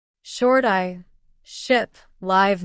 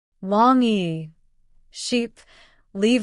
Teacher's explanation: short I ship live mouth relaxed long e sheep leave mouth wider tongue higher and tense.